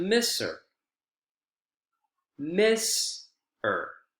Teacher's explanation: notice how her isn't pronounced or stressed fully it's deemphasized right it's unstressed because it's a structure word